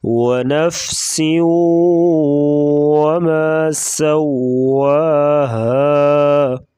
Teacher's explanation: سین سیٹی جیسی آواز نکالیں گے اور واو کو پڑھتے وقت ہونٹ گول کریں گے